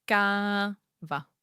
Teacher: You can clearly see the difference in the length. Káva. Ka is long, va is short. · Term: long vowels